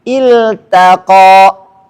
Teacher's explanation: ta ketemu qaf, taknya nggak boleh tebal, harus tipis.